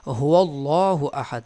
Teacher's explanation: لفظ اللہ کے لام کو اس لیے پر پڑھیں گے کہ اس سے پہلے والے حرف یعنی واو کے اوپر زبر ہے